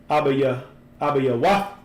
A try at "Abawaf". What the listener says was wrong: It's not Abaya. Abawaf.